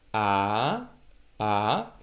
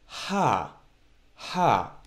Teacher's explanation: when we pronounce hey we exhale a bit more we get some more air to come out of our throats as opposed to ALF so Alf the sound a a hey the sound ha ha